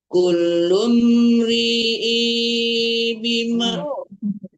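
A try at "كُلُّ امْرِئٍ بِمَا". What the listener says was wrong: Bukan ri'i, jangan panjang i-nya. Kulum ri'im bima.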